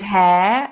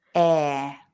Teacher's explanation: we don't say the h